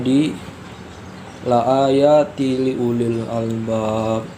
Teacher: Cara baca hukum idgham bila gunnah yaitu meleburkan nun mati atau tanwin dengan huruf di depannya, dan seolah-olah huruf n di nun mati atau tanwin tidak dibaca tanpa didengungkan serta ditahan sekitar 1 atau 2 harokat sebelum menyebut jelas huruf di depannya.